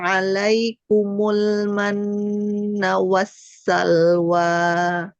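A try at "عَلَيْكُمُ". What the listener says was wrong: Lam tipis. Alaikumul. Alaikumul. Mul.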